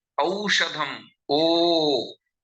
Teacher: O and Au are Kanthostham, the throat and the lips, throat plus labials